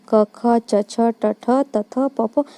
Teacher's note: अघोष जिसको बोलने में कंपन न महसूस हो उसे अघोष, जैसे कि प्रत्येक वर्ग का पहला और दूसरा व्यंजन, इसे अघोष कहते हैं। · इन सब में कोई कंपन महसूस नहीं होगा आपको। हर वर्ग का पहला और दूसरा व्यंजन वर्ण क्या हो गया, अघोष।